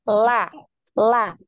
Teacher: anti itu di ditempelkan di gusi Sampai Di Ujung di akhir ujung lidah ya itu nempel di gusi dari gigi-gigi bagian atas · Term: huruf lam